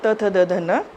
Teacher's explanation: जैसे आप त बोलोगे तो हमारी जीभ जो है हमारे दांतों को टच करेगी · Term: दंत वर्ण